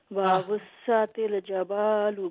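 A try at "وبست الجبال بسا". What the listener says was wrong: नहीं, ये जबालू नहीं है, जिम के नीचे कसरा है। वबुस्सतिल जिबालु बस्सा।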